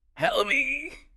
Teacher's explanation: And help me. That often links really closely. It almost sounds like one unit. Help me. The vowel in me is very short and unstressed.